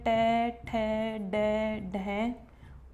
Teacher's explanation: हमारे मुख के अंदर मूर्धा वह स्थान होता है जहाँ से हम ट का उच्चारण करते हैं। ट का उच्चारण करते समय हमारी जिह्वा जिस स्थान पर स्पर्श करती है वह मूर्धा कहलाता है। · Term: मूर्धन्य वर्ण